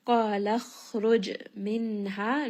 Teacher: nun sakin here is going to have a uh idhar, meaning nun sound is pronounced clearly. Ha is going to be a two count madd. · Jim has qala qala, it is part of qutb jad, so give it a little bit of bounce.